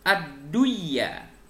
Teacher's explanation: nun matinya melebur ke huruf ya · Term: idgham bighunnah